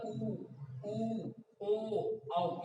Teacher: उच्चारण करते समय होठों का आकार गोल हो जाता है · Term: वृत्ताकार